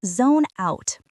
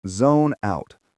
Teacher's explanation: Notice the connection between the N and the O. Zone out.